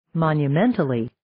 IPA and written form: ,mɑnjʌ'mɛntʌli (Monumentally)